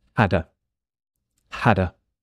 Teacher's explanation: I've had a. Had and a connect.